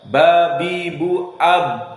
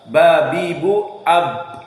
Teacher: Lips, bibir yang atas dengan bibir yang bawah, itu intibaq, saling menekan.